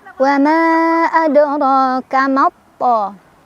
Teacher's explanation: Cara bacanya alif lamnya dilewat, nggak dibaca, kita langsung baca ke to yang ada tasydidnya. · Tetapi karena di depannya menghadapi hamzah wasol dan setelah hamzah wasolnya ada huruf yang ada tasydid, maka mad tabi'inya sudah nggak jadi lagi mad tabi'i ya, karena kita bacanya pendek aja, langsung tekan ke to. Jadi nggak mato nggak, tapi mato langsung ke to, maknya pendek. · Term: idgham syamsiyah